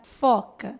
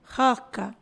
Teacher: Se eu vou falar a palavra foca e eu não encosto o dente no lábio, roca, eu não vou ter o som do F. Para eu ter o som do F, eu preciso fazer dente nos lábios inferiores.